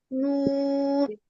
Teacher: 9 নম্বর মাখরাজ, জিহ্বার আগা তার বরাবর উপরের তালুর সঙ্গে লাগিয়ে